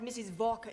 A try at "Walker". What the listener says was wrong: what w is pronounced w your employer's name is Walker